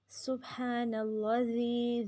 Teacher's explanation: ذی کو ہم نے لمبا کیا، یا مدہ ہے یا ساکن سے پہلے زیر